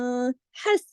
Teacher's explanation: اب دیکھیے حسرت, حس, یہ جو ہا ہے یہ گلے سے پڑھا جاتا ہے, حس, اور سین کی آواز میں سیٹی کی سی آواز ہوتی ہے